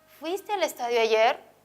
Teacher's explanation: esta pregunta es una pregunta total y estas preguntas siempre tienen tono ascendente